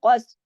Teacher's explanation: कौफ जो है मोटा पढ़ा जाएगा, कौफ आगे सा से जुड़ेगा, क्योंकि सा के पास हरकत नहीं है, जज़म है, तो वो पीछे वाले हर्फ से जुड़ के पड़ेगी।